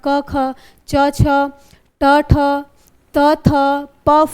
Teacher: पहले दो वर्ण क्या होते हैं, अघोष होते हैं।